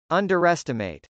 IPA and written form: ˈʌndɚˈɛstəm.eɪt (underestimate)